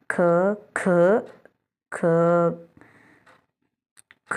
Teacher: ಮಹಾಪ್ರಾಣ ನೋಡಿ ಫ್ರೆಂಡ್ಸ್ ಮಹಾಪ್ರಾಣ ಪ್ರತಿ ವರ್ಗದ ಎರಡನೇ ಮತ್ತು ನಾಲ್ಕನೇ ಸಾಲಿನ ಅಕ್ಷರಗಳು ಹೆಚ್ಚು ಉಸಿರಿನ ಬಳಕೆ ಯಿಂದ ಉಚ್ಚರಿಸಲ್ಪಡುವ ಅಕ್ಷರಗಳು